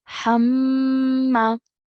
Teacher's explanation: You can hear that I'm pressing down on the meme, and I'm holding that meme sound for about 2 seconds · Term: ghunnah sound